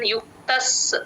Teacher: కొంచెం డ్రాగ్ చేస్తే ఆ స కింద స వత్తు క్లియర్ గా వినిపిస్తుంది విద్వాన్ యుక్త సమాచరన్ విద్వాన్ యుక్త సమాచరన్ విద్వాన్ యుక్త సమాచరన్ విద్వాన్ యుక్త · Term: ద్విత్వాక్షరం